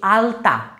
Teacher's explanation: আলতা বলার সময় দেখবা জিভটা কিন্তু তালুতে ঠেকছে না, আলতা বলার সময় লটা কিন্তু দাঁতে ঠেকছে। আলতা বলার সময় লটা দেখবে দাঁতে ঠেকছে